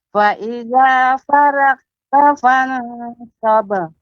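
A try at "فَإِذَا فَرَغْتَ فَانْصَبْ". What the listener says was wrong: Ya, ro-nya lebih ditebalkan Ibu. Fa idza faragh. Tadi dia faragh, tapi faragh. Faragh. Fa idza faraghta fansab.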